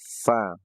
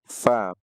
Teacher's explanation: ujung gigi seri atas dan bibir bawah Fa kita punya huruf F itu kurang lebih mirip dengan itu